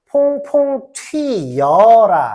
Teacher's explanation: 단모음으로 안 쓰고 이중모음 사용이 남한 대한민국보다 훨씬 많이 씁니다